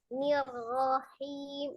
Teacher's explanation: Iya, tasdid ro-nya kan kalau misalnya ro tasdid itu berarti huruf ro-nya ada dua, satunya sukun, satunya berharokat. Sebelum sukunnya itu kasroh dia tipis, nir tipis, ro-nya tebal